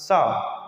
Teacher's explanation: अघोष हो जाएगा और यह साथ ही साथ में उष्म अथवा संघर्षी व्यंजन भी है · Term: अघोष वर्ण